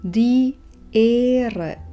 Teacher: Tu však vyslovíme dlho, ako by H bolo dĺžňom pre O. Die Ehre, písmeno H nevyslovíme, pretože stojí za samohláskou E, ktorú vyslovíme dlho.